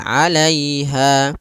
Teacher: Pada lafal lai di sini ada bacaan lin lembut dalam pelafalannya.